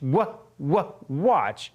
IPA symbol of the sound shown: w